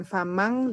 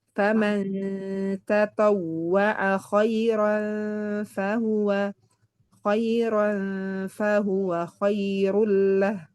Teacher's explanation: Kalau idgham itu biasanya dengan ng. Nah, ini dia samar antara n dan ng ya kan. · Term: ikhfa